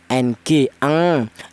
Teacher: bunyi vokalnya yang lebih dominan ada tingkat dengungnya, ng, ang. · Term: ifa adna